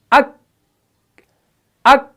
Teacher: आवाज भी फौरन बंद होगी और सांस भी बंद होगी, यानी एयर फ्लो भी बाहर नहीं आया। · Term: सिफत शिद्दत